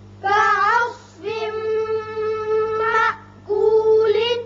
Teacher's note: صاد پر کر کے پڑھتے ہیں